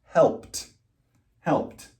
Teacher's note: So I just add an ED, but the D still sounds like a T. Helped. Helped.